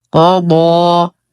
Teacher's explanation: قضى. نفخم القاف والضاد، بعدها ألف ساكنة وبعد الألف همز في الكلمة التي تليها.